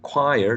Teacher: we have a diphthong here plus a schwa